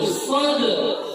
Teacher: Sadrak itu dalnya itu qalqalah. Qalqalah itu dia memantul. Sadrak. Raknya itu, kafnya itu ada nafas keluar.